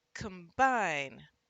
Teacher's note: when the second syllable is punched the first syllable often gets the schwa sound